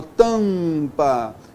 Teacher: Quando eu falo a palavra tapa, eu tenho aqui uma vogal oral. Quando eu falo a palavra tampa, o A e o M é uma vogal nasal.